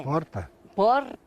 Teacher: Aqui vivem descendentes de italianos e por aqui o R fica bem mais fraco.